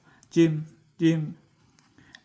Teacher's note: Əgər biz bunun alt hissəsinə nöqtə yazarsaq, geyim tələffüz Azərbaycan dilindən fərqlidir. Dilin ortası üst damağa toxunur olaraq tələffüz olunur · Dilin ortası üst damağa toxunularaq tələffüz olunur.